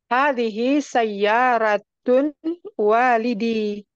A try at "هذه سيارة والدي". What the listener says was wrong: Jangan ditanwin Om, mudhaf nggak boleh tanwin.